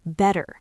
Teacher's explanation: In American English, those T sounds in better turn into soft D sounds, like a quick flap of the tongue, better. And the R in better links directly into the O in off, better off.